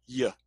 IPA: j